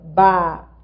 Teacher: a gramática diz que quando há o NH na sequência, esse NH nasaliza o I.